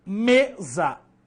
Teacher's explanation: A palavra mesa tem a sílaba me sendo a mais forte. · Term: sílaba tônica